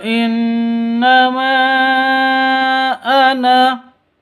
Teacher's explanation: Nun tasydidnya berdiri sendiri artinya dengung dua ketuk ini namanya ghunah musyaddadah kalau berdiri seperti ini berdiri sendiri non · mad asli bertemu dengan hamz di dua kata innama sama Ana artinya panjangnya boleh dua ketuk boleh empat ketuk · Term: Mad Jaiz munfasil